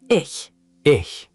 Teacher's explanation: Soft ch, high and forward.